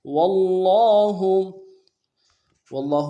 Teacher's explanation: فطل فطل وابل فطل واللہ واللہ میں واو کو نرم سے ادا کریں گے اور لفظ اللہ کے لام کے ساتھ ملانا ہے، لفظ کے لام کے اوپر تشدید ہے زور دیں گے، اگر لام کے اوپر کھڑا زبر ہے ایک الف دار میں کھینچیں گے، ہا کو نرم سے ادا کریں گے.